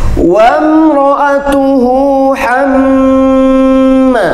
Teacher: Ya, ada hamma, itu namanya mim tasydid disebutkan gunnah. Ya, bacaan gunnah harus dibaca atau ditahan 3 harakat